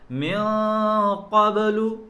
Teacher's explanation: یہ اخفا یہاں موٹا ہوگا اس لیے کہ نون ساکن کے بعد لفظ قاف موٹے حروف میں سے ہے